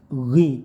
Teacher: ghinya tebalkan terus dikasih angin sedikit, panjangkan satu alif atau dua harokat, jangan sampai membaca gi, bukan g tapi gh seperti gh gitu ya, ada anginnya sedikit.